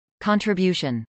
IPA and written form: kˌɑːntrəbjˈuːʃən (contribution)